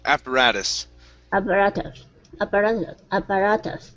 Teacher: Yeah, so switch that T to a flap T.